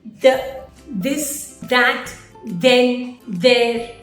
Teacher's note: we can hear the voice sound at the beginning of functional words like the this that then there